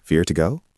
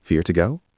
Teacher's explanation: >> It usually sounds like fear to go. It is extremely fast. The or almost disappears. The two becomes just a t sound. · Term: speed mumble